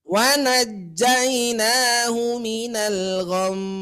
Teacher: Kelamaan Bu, ya. Tuh, kelamaan bunyi dengungnya. Cukup hanya 3 ketukan saja.